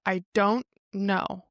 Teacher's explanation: because we're not pronouncing the T at the end of don't, we're blending this don't into the next word